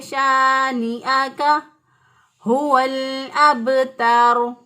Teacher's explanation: ہا جو ہے اس کو اقصی حلق سے اسی طرح ادا کیا، یعنی جو سینے کی طرف گلے کا حصہ ہوتا ہے وہاں سے ہا ادا کیا. اب لام ساکن تھا، ساکن حرف پیچھے والے حرف کے محتاج ہوتا ہے جس کے اوپر زبر زیر پیش ہو.